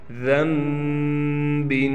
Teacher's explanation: میں نے آپ کو جیسے پہلے بھی ہر سبق میں بتلاتا ہوں، جس نون کے اوپر چھوٹی سی میم آ جائے، دیکھیں یہاں بھی چھوٹی سی میم آئی ہوئی ہے، تو پھر اس کے میں ہم نون کو نہیں پڑھیں گے بلکہ ہم میم کو پڑھیں گے غنہ کے ساتھ۔ دیکھیں ذنب، نون کو ہم بالکل ختم کر دیں گے، اسے اقلاب کا قاعدہ کہا جاتا ہے۔